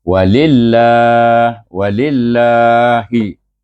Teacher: oleh kerana nama Allah ni lillahi dia bermula dengan lam baris bawah maka kita baca Wil dengan nipis